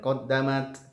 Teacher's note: perhatikan ada bunyi hamas dari ta-nya